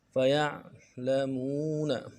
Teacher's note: مون میں واو مدہ ہے، ایک الف دار میں کھینچیں گے